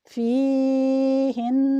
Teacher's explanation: آواز 2 حرکات جتنی لمبی تو ہوگی، مگر قاری اس بات کا دھیان رکھے کہ آواز میں جنبش پیدا نہ ہو۔ جنبش پیدا ہوتے ہی یہ قلقلہ کے زمرہ میں آ جائے گا۔